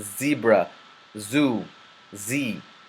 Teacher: your tongue remaining behind your teeth and you make it a buzzing sound just like the letter Z so the zebra zu z all these Z sound it's very · It is a consonant and it's characterized by your tongue remaining behind your teeth and you making a buzzing sound